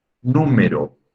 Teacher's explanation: Nu es la sílaba tónica.